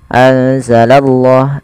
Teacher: anzalallah, dan kita menebalkan pada lafal Allahnya. Karena di sini lafzul jalalah yang didahului dengan huruf fathah atau dhammah, maka dia akan ditebalkan huruf Allahnya.